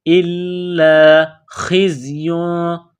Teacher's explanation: میں سختی کرنی ہے، اِلَّا، لام کو دبانا ہے، اِلَّا خِزْيٌ، خا گلے سے بلغم نکالنے کی طرح اس کو پڑھیں گے ، خا کو زا کے ساتھ ملانا ہے،